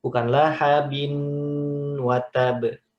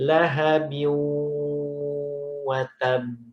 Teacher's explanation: Tanwin ketemu waw, dia punya hukum namanya idgham bigunnah. Idgham bigunnahnya idgham nakis.